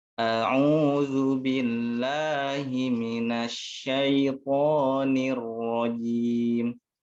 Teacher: usahakan huruf ain ini tidak masuk ke hidung ya, karena ain itu huruf di pangkal tenggorokan.